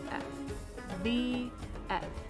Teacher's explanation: you can test this by putting your fingers on your throat when you say v you should feel it vibrate a little bit but not when you say f